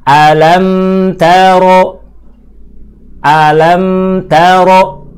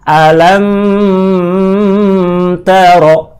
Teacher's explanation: tanda sukunya terlihat maka dipastikan Meme tersebut dibaca dengan hukum ilhad prakteknya mim dibaca jelas tidak boleh dipanjangkan terlalu lama · cukup mim baca jelas, pindah ke huruf ta. Jangan sampai kita menahan lama pada huruf mim. Alam taro, kelamaan.